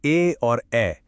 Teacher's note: जैसे ए और ऐ यह कंठ और तालु दोनों के मेल से बनते हैं